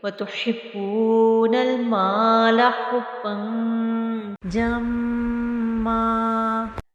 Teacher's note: جب ہم اس پہ وقف کریں گے تو میم کی جو تنوین ہے وہ ایک زبر میں بدل جائے گی اور اس کو ایک الف کی مقدار کے برابر کھینچ کر پڑھیں گے